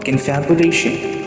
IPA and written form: kənˌfabjʊˈleɪʃ(ə)n (Confabulation)